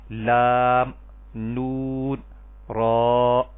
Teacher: تو زبان کا کنارہ، طرف لسان، زبان کا کنارہ اوپر والے دونوں دانتوں کے مسوڑوں سے جب آپ لگائیں گے تب یہ تینوں حروف ادا ہوں گے، لام، نون، را، اور ان تینوں حروف کو طرفیہ کہتے ہیں۔